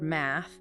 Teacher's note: the soft, unvoiced TH, like in the word math, where you just push air gently through your teeth. No vocal cord vibration.